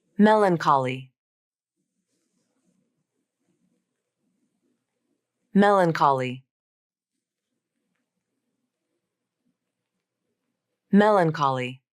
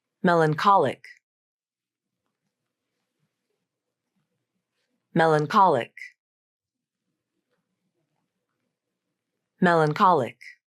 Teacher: second notice how the syllable stress changes between the two words in Melancholy the primary stress is on the first syllable but in melancholic the primary stress shifts to the third syllable